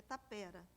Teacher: a pronúncia no Brasil é tapera, com a tônica no é. Nos Sermões de Vieira, grande mestre da língua dos índios, vem acentuado tápera, mas sempre ouvi dizerem no Brasil tapera, o engenho tapera.